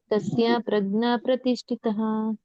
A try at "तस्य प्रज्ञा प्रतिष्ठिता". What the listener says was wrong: ಪ್ರತಿಷ್ಠಿತ ಅಷ್ಟೇ ಇರೋದು, ಅಲ್ಲಿ ವಿಸರ್ಗ ಇಲ್ಲ.